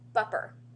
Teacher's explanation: he couldn't pronounce the S and the T together so he ended up calling him buer